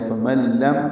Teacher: نون ساکن کے بعد لام آیا، ادغام ہوگا، ادغام کامل ہے